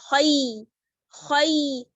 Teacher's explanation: یا ساکن ہے اس سے پہلے زبر ہے تو ہم کیا کریں گے اس کو جلدی پڑھیں گے اس کو کھینچنا نہیں ہے خی ایسے نہیں کرنا ہے اس کو جلدی پڑھنا ہے اور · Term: حروف لین